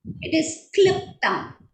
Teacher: And in Kliptam, when we say it is Kliptam, here the R is silent. Though in the transliteration the R is there, R is not pronounced.